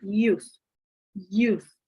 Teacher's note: Notice how the lips begin to round for the next sound, the oo as in boo vowel.